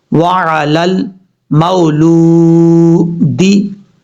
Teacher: यहाँ मीम के बाद जो वाव है ये वाव लीन है, मद्दा नहीं है, और लाम के बाद जो वाव है ये वाव मद्दा है, यानी इसको लंबा करेंगे एक अलिफ की मिकदार।